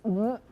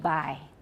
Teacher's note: it's not going through the nose it's temporarily not coming out of the mouth but it will go through the mouth when we release the stop